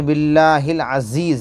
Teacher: باللام کے اوپر کھڑا زبر ہے، کھینچ کر پڑھیں گے